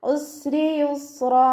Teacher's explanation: റോ കെസ്റ ആയതുകൊണ്ട് നമ്മൾ താഴ്ത്തി ഉച്ചരിക്കും.